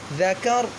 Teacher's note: را کو موٹا کریں گے وقف کی صورت میں